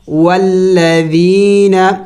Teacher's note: ذال نرم حروف میں سے ہے اور یہ مد ہے ایک الف کے مقدار کھینچیں گے